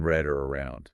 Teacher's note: your tongue needs to curl back slightly but and this is important you shouldn't touch the roof of your mouth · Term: English R sound